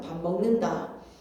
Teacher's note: 단어와 단어 사이에서도 일어나기 때문에 밥이라는 명사 하나에 먹는다라는 동사 각각의 단어지만 단어 사이에서도 밥 먹는다라는 걸로 비음이 일어나는 겁니다 · 니은, 미음, 비음을 만나니까 조음의 위치는 그대로 있으면서 기억의 여린입 천장 소리에서 소리가 나는 이음으로 디귿은 치조음의 니은으로 비읍은 입술 소리에서 비음인 미음으로 조음의 위치는 그대로 조음 방법의 동화가 된 비음화